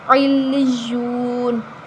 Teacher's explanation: نون کے اوپر جو زبر ہے وہ وقف کی صورت میں ختم ہو جائے گی اور نون ساکن ہو جائے گی